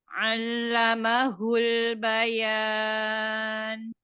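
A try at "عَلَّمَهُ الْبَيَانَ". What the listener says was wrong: Lah masih sedikit menebal ya. Allamahul bayan. Bayan ke bawah aja bacanya. Allamahul bayan. Suaranya ya arahkan ke bawah coba.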